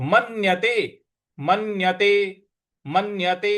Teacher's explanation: म के बाद जो आधा न है उस पर हमको आघात देना है